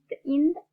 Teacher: நாவின் நுனி மேல்வாய்ப்பல்லின் அடி